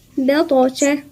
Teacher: الباء مرققة والطاء مفخمة في قلقلة